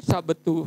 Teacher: karena B bersuara, T tidak bersuara, T mempengaruhi bunyi B jadi P